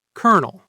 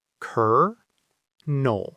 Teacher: we get the silent L and the phantom R